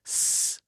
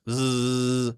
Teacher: the only difference between S and Z really is one is voiced and one is unvoiced. S, z, s, z, s, z.